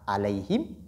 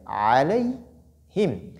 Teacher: Al-ayn huna, la lettre ayn sort du milieu de la gorge. Donc, ayn et non hamza.